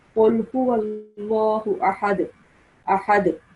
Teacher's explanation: The dal sound will make slight jerking sound at the end. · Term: qalqala